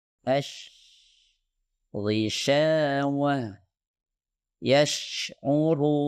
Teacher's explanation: Jadi seharusnya lidah bagian tengah diangkat ke arah langit-langit keras. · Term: shin